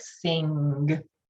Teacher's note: our language variation is to pronounce that hard g so we say things like sing